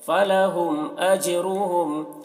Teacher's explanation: جیم میں قلقلہ کریں گے، جیم حروف قلقلہ میں سے ہے اور اس کے اوپر جزم ہے۔ را کو پر پڑھیں گے کیونکہ را کے اوپر پیش ہے۔